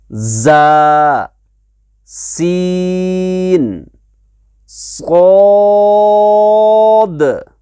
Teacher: इनको क्या कहते हैं, असला के माने आते हैं अरबी में सीटी। इनको हुरूफ असलिया इसलिए कहा जाता है असलिया क्योंकि इसमें सीटी आवाज़ निकलती है